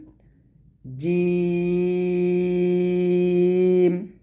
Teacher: জিহবার মধ্যখান উপরের তলার সঙ্গে লাগিয়ে আমরা উচ্চারণ করব